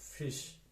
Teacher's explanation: you can't feel any vibration in your in your vocal cord okay fish no vibration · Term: uned sound